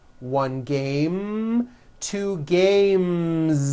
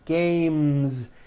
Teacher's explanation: So because of that, when you add an S, the S should also be voiced.